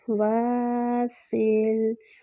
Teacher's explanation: سین میں سیٹی کی آواز آئے گی لیکن سین کو ہلانا نہیں ہے۔